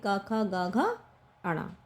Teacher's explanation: यह हमारी कंठे ध्वनियां है यानी कंठ से बोली जाती है